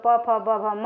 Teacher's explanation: दोनों ओठों के स्पर्श से बोले जाने वाले वर्ण ओष्ठ कहलाते हैं। इसके अंतर्गत उ बड़ा ऊ तथा प वर्ग प फ ब भ म आते हैं।